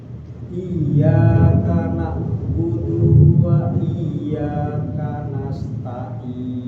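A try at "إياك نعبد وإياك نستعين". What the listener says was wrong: Udah baik, tinggal dunya tadi agak kepanjangan. Iyyaka na'budu wa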